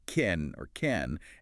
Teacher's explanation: The vowel sound in can often weakens when it's unstressed becoming more like can or can and you reduces to yah.